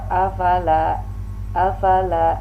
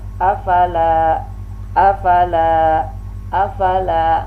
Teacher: Di lam ini ada alif berarti lamnya yang panjang, di akhir yang panjang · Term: lamnya panjang